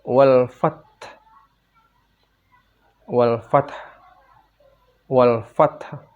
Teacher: Bila wakaf suara fath ditekan dan diikuti huruf ha sukun atau mati dengan suara rendah. · huruf H sukun atau mati dengan suara rendah. Jadi kalau berhenti dibaca menjadi wal fath.